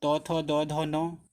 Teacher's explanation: त वर्ग के उच्चारण में हमारी जीभ जो है वो दांत पे लग रही है, इसलिए इनको हम दंत व्यंजन भी कहते हैं।